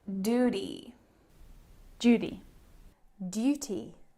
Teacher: in american english they often drop this yes sound it's called yod dropping